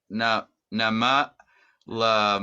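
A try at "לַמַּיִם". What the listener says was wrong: there's no ah sound in here. But it's Lamino. When you have the dot followed by a yud, then it's longer, so it's e.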